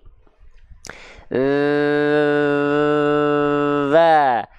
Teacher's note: kalau huruf zal, dia dilafalkan hanya mengalir suara tapi dia jahar tanpa mengalir nafas. Jadi huruf zal ini yang mengalir cuma suara.